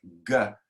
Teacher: If you make a G sound like G, the back of your tongue hits the roof of your mouth and then explodes away